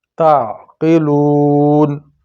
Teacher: عین کی آواز گلے سے پھنس کے نکلے گی